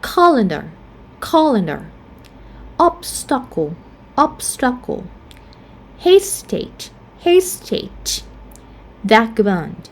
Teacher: once you have the lax vowel, the short vowel in the second syllable, we're going to stress in the first syllable.